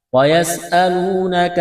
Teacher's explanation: سین میں سیٹی کی آواز پیدا کریں گے، سین کو باریک کرنا ہے ، واو ساکن سے پہلے پیش ہے، حروف مدہ واو ہے،